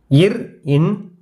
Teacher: மேல்வாய் நாக்கின் நுனி மிகவும் பொருந்துவதால் பிறக்கும் மெய்யெழுத்துக்கள்